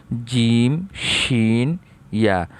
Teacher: জিব্বার মধ্যখান তার বরাবর উপরে তালুর সঙ্গে লাগায়া